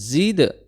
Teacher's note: zai makhrajnya adalah di ujung lidah bertemu dengan gigi seri bawah disertai dengan suara desir